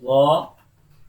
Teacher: tip of the whole tongue between the teeth, okay, between the teeth and a little bit throat involved in pronouncing za. Well done.